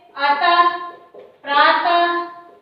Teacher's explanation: इसको विसर्ग कहते हैं। इसका उच्चारण ह की तरह होता है